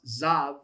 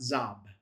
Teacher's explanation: it becomes a V. So, it's pronounced zav, not zab.